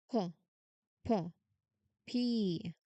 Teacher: Like a push of air. No vibration at all. So, this is voiceless.